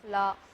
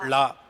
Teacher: சொல்லும்போது எப்படி சொல்லுவீங்க லா அது வந்து நாக்கு நுனிய பல்லை வந்து தொடும் நுனி நாக்கு வந்து பல்லை தொட்டா முதல் லா அதை வளைச்சு உள்ள வச்சு சொன்னீங்கன்னா லா